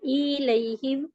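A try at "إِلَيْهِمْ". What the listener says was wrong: इलैहिम, इलैहिम, ई को लंबा नहीं खींचना, इलैहिम।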